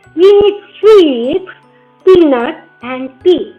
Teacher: तो end में हम यहाँ पे क्या कहते हैं, फॉलिंग टोन लगानी पड़ेगी